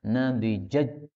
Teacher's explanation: Ini boleh dibaca idgham. Nadijaj, jadi taknya hilang ya, jadi jim